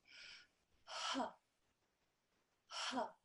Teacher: So what you do is you take a breath, ha, ha. It comes from the very bottom of your throat.